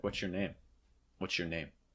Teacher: You may hear this with a rising intonation, but you may also hear this with a falling intonation. Falling is probably a little bit more standard, like what's your name?